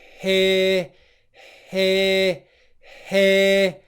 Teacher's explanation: we're in the position for the start of the ear diphthong but there's no voicing your voice box is not vibrating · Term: h sound